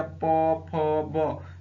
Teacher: प जब भी बोलेंगे तो आपके होंठ जो है वो आपस में सटेंगे दोनों से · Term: ओष्ठ